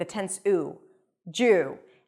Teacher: djuw - with a tense 'uw'.